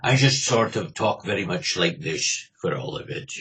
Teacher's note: I put a lot of texture in my voice, that sort of thing, and a lot of glottal stops in the middle of my words